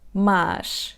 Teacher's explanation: é como um som A um pouco mais prolongado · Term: som A aberto